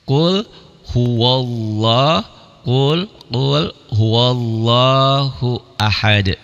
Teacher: Di lafaz Allahnya dibaca tabkhim tebal bunyi o seakan-akan ya. Qul huwallah lnya ini ini mad asli ya. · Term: tafkhim